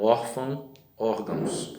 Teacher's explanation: A tônica aí é o or, de órfão e órgãos